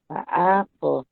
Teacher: Qalqalah sogro dibaca dengan lantunan kecil.